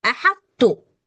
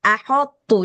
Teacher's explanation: Ha tipis, tho tebal, ta tipis.